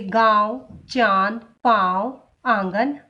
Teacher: अनुनासिक, इसका उच्चारण नाक और गले दोनों से होता है। इसका चिन्ह है ऐसे चंद्र बिंदु, जैसे गांव, चांद, पांव, आंगन आदि।